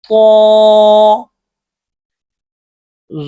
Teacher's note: زبان کی نوک جب اوپر کے اگلے دو دانتوں کی جڑ کی طرف والے آدھے حصے سے لگے